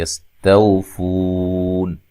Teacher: سین کو باریک سیٹی سے ادا کرنا ہے، ہلانا نہیں ہے، فو و مدہ ہے، وقف کی صورت میں مد کر سکتے ہیں، یستوفون۔